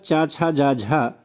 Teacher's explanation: चा छा जा झा ये जो है तालव्य ध्वनियाँ हैं